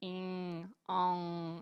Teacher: quando a gente vai cortar o som nasal, fica parecendo que tem som de G, mas não tem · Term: N nasal